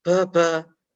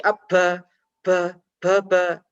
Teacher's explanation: ketika kita bunyikan maka tidak boleh ada aliran nafas atau hembusan nafas lewat mulut secara deras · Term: jaher